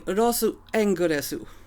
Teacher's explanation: So you wouldn't say Rosu with like a very audible U at the end, but just Rosu with like maybe a very small silent U at the end